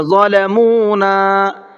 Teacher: ضا کو منہ بھر کے پڑھیں گے اور آخر میں جو یہ نون ہے اس نون کو کھینچ کر کے پڑھیں گے۔ ظلمونا، اس لیے کہ یہاں پر الف مدہ کا قاعدہ ہے، الف سے پہلے زبر ہے۔